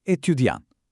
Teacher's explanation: Напишан е со т на крајот, но кога го изговараме тоа т како да исчезнува. Не постои.